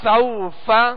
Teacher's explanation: حروف لین کو نرمی کے ساتھ ادا کرنا ہے، بغیر کھینچے، بغیر جھٹکا دیے، نرمی کے ساتھ معروف پڑھنا ہے